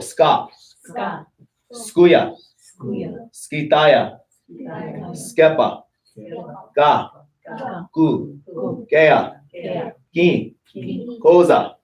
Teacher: When you see a plain K in Lakota, there should be no breath of air coming out when you say it. It's unaspirated.